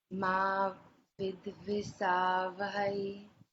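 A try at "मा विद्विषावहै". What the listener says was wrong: Only thing is Ma with Visha, not Sa.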